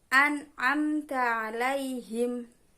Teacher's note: nun sukun bertemu dengan ain adalah bacaan idhar halki dan harus dibaca dengan terang